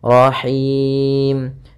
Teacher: H kecil dari tengah tenggorokan kita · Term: ha kecil